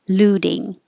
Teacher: if it's looting that t changes to a d